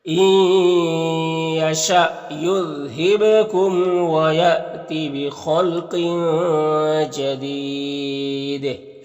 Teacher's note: اور اس تنوین کے بعد دیکھیے جیم حروف اخفا میں سے تو تنوین میں اخفا ہوگا, اور جدید میں وقف کریں گے تو مد عارض وقفی ہوگا, اور دال میں قلقلہ ہوگا · نون ساکن کے بعد یا ہے حروف یومن میں سے تو ادغام ناقص ہوگا